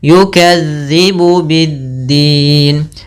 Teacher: Dia dzal, ujung lidah nempel dengan gigi seri atas. Yukadzibu biddin.